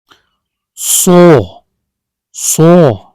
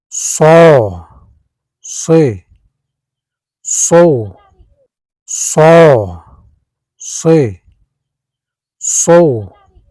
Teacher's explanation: placing the tip or blade of the tongue close to the upper gum ridge, alveolar area, creating a narrow passage for air to flow with friction. It is a voiceless emphatic fricative, meaning the vocal cords do not vibrate during pronunciation, while the back of the tongue rises slightly toward the soft palate to produce a heavy, deep quality known as tafkheem.